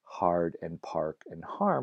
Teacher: when that short a appeared before an R consonant it was typically backed meaning it came to be pronounced not as an AA but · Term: a back vowel